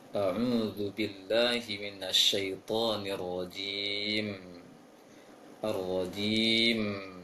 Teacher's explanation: Di ujung ta'awudz dan bismillah tidak boleh ditahan. Karena kalau ditahan mimnya maka sudah terhitung mendengungkan huruf mim